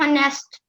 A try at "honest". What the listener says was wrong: Honest. The word is honest. H is silent. It's not honest, it's honest.